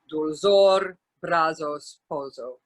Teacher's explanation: Also Z, unlike Castilian Spanish, it is never dentalized. It's just pronounced like a Z.